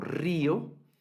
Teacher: la R puede tener un sonido, suena fuerte cuando está al inicio de una palabra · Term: R dura